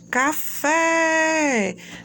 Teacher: Se você puxa o fé com mais força, você já sabe que aquela é a sílaba tônica